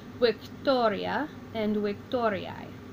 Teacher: So the emphasis will be put on the to.